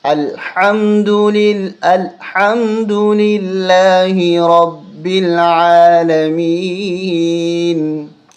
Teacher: با کے اوپر تشدید ہے، اس لیے رب با پہ زور دیں گے، عین کو حلق سے نکالیں گے